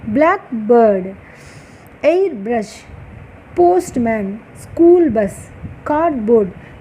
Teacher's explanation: ఈ compound వర్డ్స్లో starting word ఏమో prominence ఇచ్చి పలుకుతున్నాం, స్ట్రెస్ చేస్తున్నాం